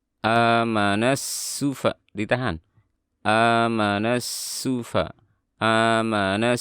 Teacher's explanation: dan sin ini bersifat rokhawah dan sofir. Harus jelas suara sinnya. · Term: huruf sin